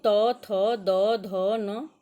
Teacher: इसका उच्चारण स्थान दंत है। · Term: त वर्ग